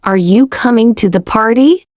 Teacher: Can you hear how my voice rises at the end? That rise tells the listener, "I'm curious.